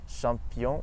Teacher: in french the ch and the sh sounds both make the sound sh